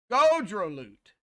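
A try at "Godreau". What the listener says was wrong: Now I don't even need to pronounce the L and the T at the end. it was a mute.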